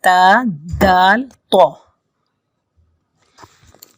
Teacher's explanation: ایک ہے، تا دال تو، ان تینوں کا مخرج ایک ہے۔ یہ زبان کی نوک کو آپ آگے سے لگائیں گے اگلے دو دانتوں کے درمیان، تو وہ تا کی آواز نکلے گی